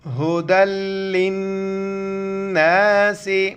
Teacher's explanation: قرآن فیہ القرآن ہدی للناس, ہا پیش ہو, دال لام دو زبر دل, لام نون زیر لن, دال کو لام کے ساتھ ملائیں گے, اس لام کو نہیں پڑھیں گے